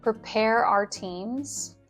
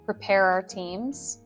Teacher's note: Often the word our can sound like are in rapid speech.